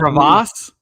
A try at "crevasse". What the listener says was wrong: I don't think we're not in the crevice, but I do like your emphasis on the wrong syllable there.